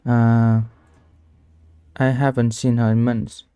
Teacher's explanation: The word is both stressed, strong, clear, longer, and the intonation falls. Pitch goes down as the sentence ends. Tip: Try exaggerating the drop when you practice. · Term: falling intonation